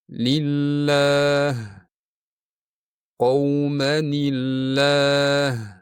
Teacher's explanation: Alloh lafzi jaloladagi lam ingichka talaffuz qilinadi. Bunday talaffuz odatda so'z oldidan tanvin yoki kasra kelganda yuz beradi.